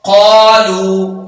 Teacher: لمبا کریں گے قاف کو کیونکہ الف ہے اور زبر والا حرف ہے